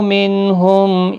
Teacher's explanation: نون ساکن کے بعد ہا آیا ہے، اظہار حلقی ہوگا، گنہ یا اخفا نہیں ہوگا